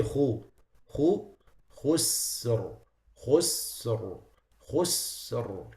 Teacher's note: Don't make the sin elevated, otherwise it sounds like sad. So you have to, but the kha is elevated.